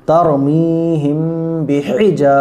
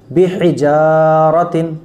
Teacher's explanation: ہا بڑی ہا ہے، آواز حلق سے نکلے گی بیچ میں سے